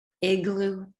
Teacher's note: the vowel is shorter in duration and raised